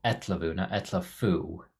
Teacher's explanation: this f will also sound more like a v